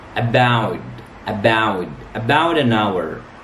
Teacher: Because the ta sound here comes between two vowels, so we pronounce it da sound.